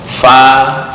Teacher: Ada yang hanya fa, bibir bawah dengan gigi, bibir atas nggak ikut campur.